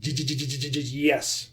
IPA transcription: dʒ